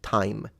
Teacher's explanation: time in English which does have a little aspiration